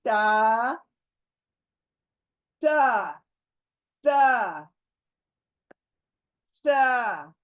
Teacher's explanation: जबान की नोक सामने के दांतों के जड़ को लगकर आएंगी आवाज। ट, बारीक पढ़ना है। · जबान की, हमारी जबान सामने के दांतों के किनारे को टच करना है, और ये भी बारीक पढ़ा जाने वाला लेटर है।